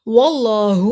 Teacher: अल्लाह के नाम को मोटा पड़ा, अल्लाह के नाम से पहले ज़बर है, अल्लाह के नाम पे खड़ी ज़बर एक अलिफ के बराबर लंबा होगा।